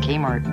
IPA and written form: ˈkeɪmɑːrt (Kmart)